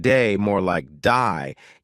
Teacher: They may say words like day more like die, giving words a slight twist.